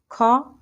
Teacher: ख तो यह महाप्राण है